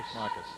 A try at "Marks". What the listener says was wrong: It looks like Marcus, but it's actually pronounced Marks.